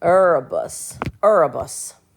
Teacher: so the stress is on that first syllable so that's your louder syllable